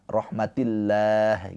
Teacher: Nah, di sini lafaz Allah sebelumnya harakatnya kasrah. Lafaz Allahnya dibaca dengan tarkik tipis pakai a